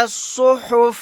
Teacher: یہاں پر صاد کو موٹا یعنی پر پڑھیں گے